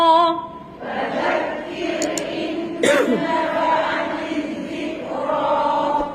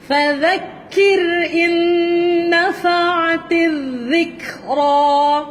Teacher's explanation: Huruf dhal. Dhal hujung lidah keluar di antara gigi atas dan bawah.